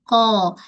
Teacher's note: Bila sebut Qaf, dia mesti kena baca dengan keadaan tebal. Pangkal lidah terangkat sebab dia huruf yang isti'ala.